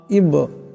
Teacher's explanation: বা সাকিন আওয়াজটি কলকলা করিয়া পড়তে হবে জটকা খাবে